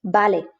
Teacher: called ube and you can see in the pronunciation that actually it's pronounced like a b there is no difference whatsoever between those b and v